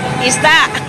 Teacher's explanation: Isda has a maragsa sound. So I-S-D-A and the A, isda, has a sudden stop.